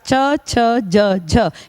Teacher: second line के चारों स्पर्श संघर्षी हैं